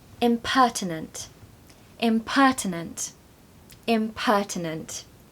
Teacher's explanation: stress the second syllable because it really helps give energy and vigor to that word